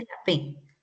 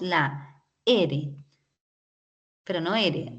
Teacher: la p pero no con la e solamente la p así hay un movimiento pero no hay una vibración